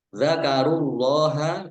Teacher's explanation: Allahnya dibaca tebal karena harokat di depannya dhammah